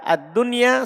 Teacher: kata dunia itu kita baca idhar, kita tidak baca idgham